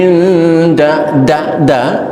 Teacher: makhrajnya di ujung lidah serumpun dengan makhraj ta th da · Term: huruf Dal